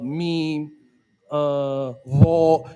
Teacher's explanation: you're gonna hear a hum so uh meme uh V you hear like a vibration that's the definition of a voice sound